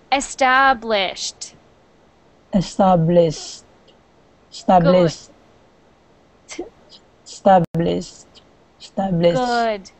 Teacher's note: after the sh at the end, put a little T or D sound on there.